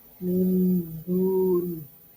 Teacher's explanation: Nun sukunya dibaca samar antara huruf nun dan juga huruf dal di depannya ini. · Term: ikhfa